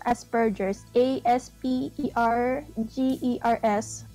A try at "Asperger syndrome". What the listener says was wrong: Well, it's actually Asperger syndrome. There's actually no S. That's a common misconception.